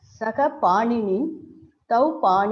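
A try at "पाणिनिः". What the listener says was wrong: Paninihi. You have to sing. Don't drop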